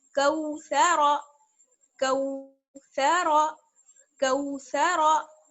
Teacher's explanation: کچھ لوگوں نے اس کو پڑھتے وقت یہ مسٹیک کر دی کہ سا کو بھی موٹا پڑھ دیا. سا کو موٹا نہیں پڑھنا ہے، صرف را کو موٹا پڑھیں گے.